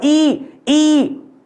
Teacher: अवर्तुलित स्वर या फिर अवृत्तमुखी जिसमें गोल ना होता हो